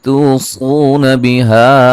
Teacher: नून साकिन का इक़लाब है। नून को मीम से बदल देंगे गुन्ने के साथ